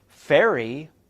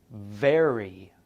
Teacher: F is voiceless and V is voiced.